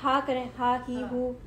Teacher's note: آپ کو فیل ہو رہا ہے گرم ہوا آ رہی ہے, اور آپ کو تھوڑا زور بھی لگانا پڑے گا. آپ کو ادھر سے فیل ہو رہا ہے کہ وہ گرم ہوا باہر نکال رہا ہے.